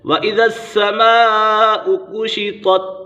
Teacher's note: حروف مدہ کے بعد حمزہ اسی کلمے میں ہے تو مد متصل ہوگا